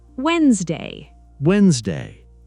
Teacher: Many learners are surprised when they discover the first D is silent.